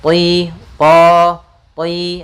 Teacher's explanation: makhraj daripada huruf tho ujung lidah kita menempel dengan gusi atas ya kemudian ee apa ee pangkal lidahnya terangkat sehingga terdengar suara